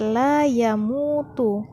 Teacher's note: Pada kata la yamutu, mim bertemu dengan waw sukun, maka panjangnya 2 harkat.